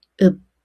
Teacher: Bachim sounds can only use one of the seven final sounds So even though the consonants is 피읖, the sound changes to the representative 비읍 sound